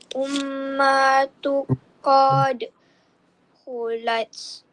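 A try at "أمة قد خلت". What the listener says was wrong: Cuma dengung tu belum sampai lagi. Ummatun qad kholat.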